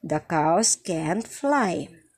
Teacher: This is a falling intonation. Why? It is a statement.